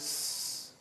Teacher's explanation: But when you say cats, the pluralizing sound is s, like that. No vocalizing, no vibration of the vocal cords.